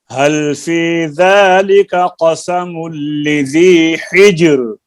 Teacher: یہ راہ باریک ہے، راہ کو باریک کرنا ہے